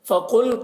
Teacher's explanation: قاف کو پر پڑھیں گے، قاف حروف مستعلیہ میں سے ہے